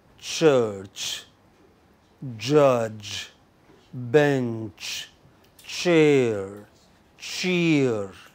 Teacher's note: There is complete closure. The middle of the tongue here rises towards the hard palate, completely blocks it, and then slowly it lets it go. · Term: gradual release